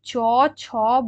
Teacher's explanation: শুরুতে শুনতে লাগে স্পর্শ বর্ণের মতো আর শেষে শুনতে লাগবে উষ্ম বর্ণের ঠিক আছে তাহলে সেই বর্ণকে বলা হচ্ছে গৃষ্ঠ বর্ণ শীষ ধ্বনি